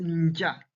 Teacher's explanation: the letter ja in native Kikuyu words is pre-nasalized. It appears as nja rather than a plain ja.